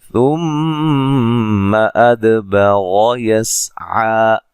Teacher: ثُمَّ أَدْبَرَ يَسْعَىٰ میم مشدد پہ غنہ ضروری ہے. دال کو ہلا کے پڑھیں گے, دال پہ قلقلہ ہے